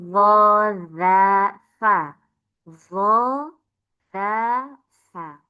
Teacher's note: Kena ujungnya gigi seri atas ada dza tsa. Dza tsa.